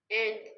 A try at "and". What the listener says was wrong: Yeah, not and, but it's what you do is you make the D sound very strong. You like and, like something like that. Try to say and. Make a D sound, but don't make it too strong.